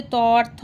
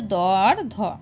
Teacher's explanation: এর মধ্যে অঘোষ হচ্ছে ত আর থ, আর ঘোষ হচ্ছে দ আর ধ। আর ত আর দ হচ্ছে অল্প প্রাণ, থ আর ধ হচ্ছে মহাপ্রাণ।